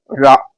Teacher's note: ஓகேங்களா, அந்த ழா எப்படி பிறக்கிறது? நாவின் நுனி மேல் நோக்கி வளைந்து வருடுவதால், வளையம் மட்டும் இல்லாம வருடுறதால அது ழகரம் தோன்றுது.